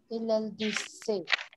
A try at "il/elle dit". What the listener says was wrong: से नहीं है ना ना ना ना. ई पे कोई एक्सेंट ही नहीं है तो il elle dit.